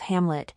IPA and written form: ˈhæmlɪt (Hamlet)